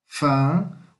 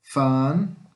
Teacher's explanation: O V em holandês, neerlandês, tem som de F. Van. Aqui é igual, o que está escrito de, tá?